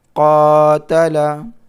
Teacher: قاف کو تھوڑا کھینچ کر کے پڑھنا ہے کیونکہ الف ہے یہاں پر الف مدہ، الف سے پہلے زبر ہے، الف مدہ ہے.